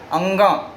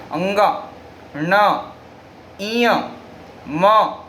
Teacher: आवाज़ कंठ से आ रही है, लेकिन इनका मुख्य यानी ज़्यादा प्रेशर कहाँ पड़ता है, हमारे नासिका पर पड़ता है, अर्थात नासिका से वायु निकलती है।